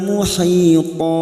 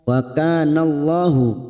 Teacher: ka fathah diikuti alif 2 harokat